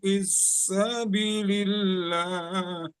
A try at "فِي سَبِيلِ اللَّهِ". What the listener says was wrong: Jadi fis ini nggak masuk ya, nggak ada tasdid di sa, di huruf sa nggak ada tasdid. Terus bisabilillahnya keburu kecepatan karena napas mungkin ya di situ ya. Qila lakumu firu fi sabilillah, bukan fis sabilillah tapi fi sabilillah.